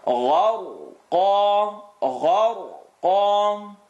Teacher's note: Ghain heavy, ra heavy, because when it has a sukoon, the letter before it has a line on the top.